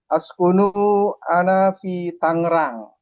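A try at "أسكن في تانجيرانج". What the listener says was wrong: Askunul disambung.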